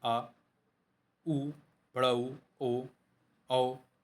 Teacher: जिन स्वरों के उच्चारण में जीभ का पश्च भाग कार्य करता है उन्हें पश्च स्वर कहा जाता है